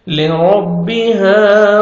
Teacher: زبر ہے را کو موٹا کر کے پڑھیں گے، لِرَبِّ، لِرَبِّهَا، الف مد ہے 1 سیکنڈ ہا کو آپ نے کھینچنا ہے